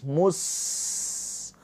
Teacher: Sin sukun mempunyai sifat saofir juga sifatnya sifat hames. Ada aliran nafas